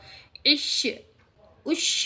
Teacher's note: اور جو ہے شین کا مخرج ادا ہونا ہے تو آپ کو کرنا چاہیے زبان کے بیچ اور اس کے مقابل اوپر کے تالو سے ادا ہوتے ہیں شین کے مخرج